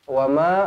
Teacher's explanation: Wama, ma di sini panjang 4 atau 5 harakat